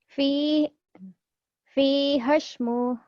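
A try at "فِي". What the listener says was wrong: Pendek. Kenapa panjang? Ayo.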